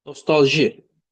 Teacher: Nostalji burda sonuncu hecaya düşür.